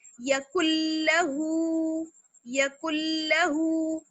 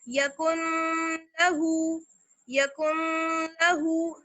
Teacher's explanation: جیسے یکن لہو، یکن لہو، نون کی ساؤنڈ بالکل نہیں آنی چاہیے. تو یہ کہلاتا ہے ہمارا ادغام بلا غنہ، بغیر غنہ کے ادغام. · اس لیے ڈائریکٹ ہم اس کو کاف کو لام سے ملاتے وقت نون کی ساؤنڈ کو بالکل ختم کر دیں گے